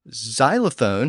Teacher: to a z sound which which is easier to pronounce so xylophone has a z sound at the front instead of a traditional X sound